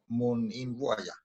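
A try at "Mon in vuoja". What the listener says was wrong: Mon in voja, good.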